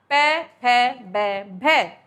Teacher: हमारे दोनों ओष जो है आपस में टच होते हैं इसीलिए इन्हें बोल देते हैं [संगीत] ओष यह हो गए हमारे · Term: ओष्ठ्य